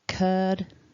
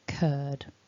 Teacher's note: we've got our a long er vowel and then that voiced d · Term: long vowel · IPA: /ɜ:/